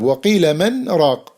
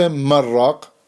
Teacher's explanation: We should merge, but we don't merge because of the breathless pause.